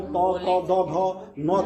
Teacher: यानी जब भी हम त फ, द, ध, न का उच्चारण करेंगे तो हमारी जीभ जो है दांत को स्पर्श करेगी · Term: तवर्ग